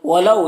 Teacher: اس میں واو لین سے نرم آواز کے ساتھ جلد پڑھیں گے